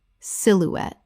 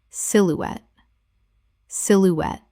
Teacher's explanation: Three syllables with the stress on the final syllable. The E at the end is pronounced.